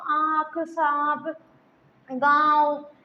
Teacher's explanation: अनुनासिक जो है अनुनासिक नाक और मुंह दोनों से बोले जाते हैं